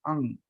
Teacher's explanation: लेकिन क वर्ग का जो निगहित है, तो वो अंग है, अंग। तो उसमें हम नासिका का ज्यादा से ज्यादा उपयोग करते हैं, मतलब इस्तेमाल करते हैं